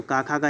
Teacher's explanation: कंठ में का वर्ग तो आ जाता है